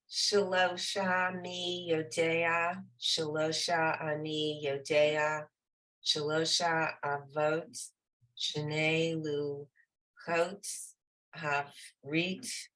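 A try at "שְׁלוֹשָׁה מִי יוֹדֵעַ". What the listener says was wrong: Very nice.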